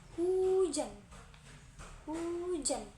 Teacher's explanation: Cara pengucapannya, celah pita suara dipersempit udara dihempuskan tanpa getaran pita suara